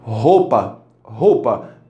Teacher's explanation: Na palavra roupa eu tenho um R, um O, um U, um P e um A, né? Só que a maioria das pessoas não pronunciam roupa com esse U tão marcado